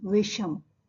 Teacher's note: यदि पहले शब्द के अंत में कोई स्वर हो और दूसरे शब्द के आरंभ में दंत्य स हो, तो दंत्य स को मूर्धन्य श में परिवर्तित कर दिया जाता है। जैसे अब देखिए संधि करके, वि जोड़ सम इज इक्वल टू विषम।